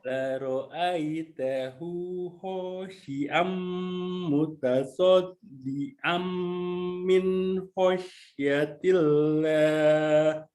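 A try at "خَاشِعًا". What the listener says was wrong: Oke, shinnya sudah bagus. Kho-nya kurang basah suaranya. Kho. Khosh, coba. Oke, jadi ada dahak sedikit ya. Ada dahaknya sedikit.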